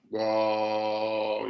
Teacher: your voice is going up. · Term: rising